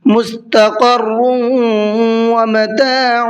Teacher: اور دوسرا یہ ہے کہ را پر دیکھیے تنوین ہے، اور اس کے بعد میں واو آ رہا ہے، تو یہ ادغام یرملون کا قاعدہ ہے، تھوڑا سا غنہ کر کے یہاں پر پڑھیں گے